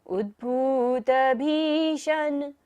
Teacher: श कौन सा है यहां पर मुर्धन्य श तो हमें मुर्धा से उच्चारण करना है · भ को लंबा लेते हुए श पर जाना है